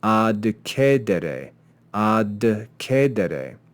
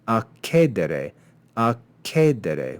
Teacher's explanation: if we simply assimilate these consonants, we can change that letter de into a ke and say akedere, akedere, which is much easier to pronounce.